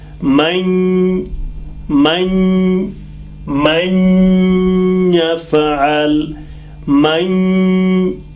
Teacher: Here you see after nun sakin ya has come and ya is in this 4. So we join, nun becomes silent, but we sound it through the nose. So ma will join the ya, but through the nose. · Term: gunna